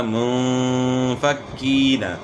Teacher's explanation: منفکین، یہاں جو ہے نا یہاں کیا ہوگا، اخفاء ہوگا۔ نون ساکن کے بعد اخفاء کے 15 حروف میں سے فا آ گئی ہے تو غنہ اخفاء کے ساتھ ہوگا منفکین۔ اور یہاں یا مدہ ہے تو اس کو تھوڑا کھینچنا ہے۔